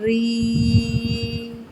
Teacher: را کے اوپر جب زبر آ جائے یا پیش آ جائے تو را کو پر پڑھتے ہیں، زیر آنے کی صورت میں را باریک پڑھی جائے گی یا نارمل پڑھی جائے گی۔